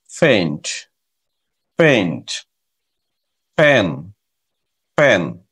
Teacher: এই সাউন্ডটা প এবং ফ এর মাঝামাঝি উচ্চারণ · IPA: /p/